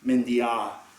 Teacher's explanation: mendia with the underlying long a doesn't become mendie, right? It stays a, mendia.